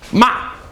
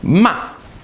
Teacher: your voice goes down sharply